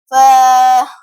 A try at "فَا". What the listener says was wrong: ف نہیں پڑھنا داس میں ہا نہ پیدا ہو ف